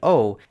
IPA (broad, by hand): oʊ